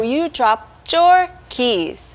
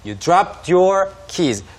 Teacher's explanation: when the words are connected, there's kind of a CH sound